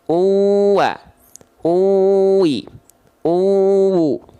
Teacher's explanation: dhammahtain berjumpa dengan huruf wawu, maka nggak dibaca unwa, unwi, unwu, tapi uwa, uwi, uwu. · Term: idgham